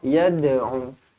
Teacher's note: lantunkan huruf dal qalqalah surah